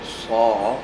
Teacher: Sad tebal, ba nipis, ra tebal.